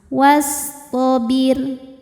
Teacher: ro sukun dibaca secara tarqiq karena sebelumnya kasrah, jadi ro-nya tipis.